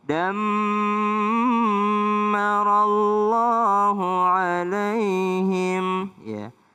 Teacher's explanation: Dammah, dammah, mim tasydid juga berdengung.